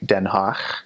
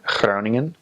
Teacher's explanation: It has a guttural G. So instead of G, it makes a ch sound. So like Den Haag, H-A-A-G, Den Haag, or Groningen, G-R-O-N-I-N-G-E-N.